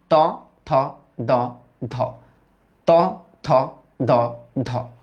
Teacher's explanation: তোমার জিভের যে ডগাটা আছে না, এটা তোমার উপরের পাটি দাঁতের সাথে বাড়ি খাবে। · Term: দন্ত